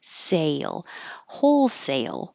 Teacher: Sale is almost two parts. So say, your tongue goes very high and then it kind of slides down for a Y up to the L. Sale.